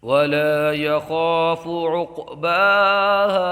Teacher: یہاں قاف ساکن میں قلقلہ ہوگا